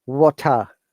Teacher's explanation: in water you can say t is strong but there is no r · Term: british accent